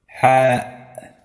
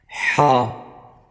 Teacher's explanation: It is pronounced by relaxing your throat muscles and creating a narrow passageway for air to flow through. Place your tongue flat against the back of your bottom teeth, exhale gently, and allow the air to pass through the narrow opening, creating friction in your throat.